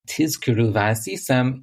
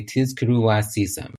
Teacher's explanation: you know that the vav is not pronounced va, it's pronounced u. It's pronounced wow, like a W sound.